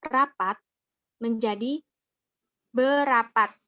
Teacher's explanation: hilangnya fonem R pada morfem ber, per, dan ter. Terjadi akibat bertemunya dengan bentuk dasar yang berawalan fonem R dan bentuk dasar yang suku pertamanya berakhir dengan ER.